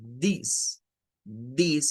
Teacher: es siempre sacando hacia afuera y haciendo una vibración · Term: sonido vibrante